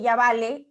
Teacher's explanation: ese B se pronuncia de manera más fricativa, no oclusiva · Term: alófono